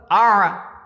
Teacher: इसी तरीके से अगर जो है ऐन का मखरज लेना है, ऐन ज़बर ऐन, अलिफ ऐन ज़बर आ, ये हलक से निकलता है, ऐन हलक से निकलता है